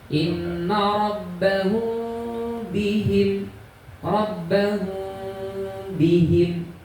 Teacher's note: Jadi bacanya saya kalau ikhfa syafawi itu tidak nempel syafatainya itu. Ada sedikit renggang.